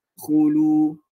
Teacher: Dan macam kita sebut tadi, bila mana huruf waw ataupun huruf alif ataupun huruf ya, belakang dia ada baris, contoh huruf waw, belakang dia baris depan, maka dia akan jadi mad tabi'i, iaitu baris depan, iaitu mad tabi'i dua harakat